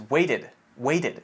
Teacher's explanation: a lot of people will pronounce this as weighted weighted it's almost a D sound